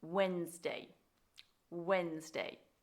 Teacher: The mispronunciation here comes from people wanting to say the D